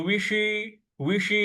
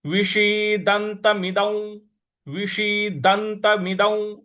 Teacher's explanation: विषी, विषी, ये जो व पे छोटी की मात्रा है और श जो है वो षटकोण वाला है, तो जीभ को थोड़ा सा मूर्ध्वा पे लगाएंगे रोल करके